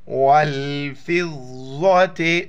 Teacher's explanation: ضا موٹے الفاظ میں موٹا کر کے پڑھنا ہے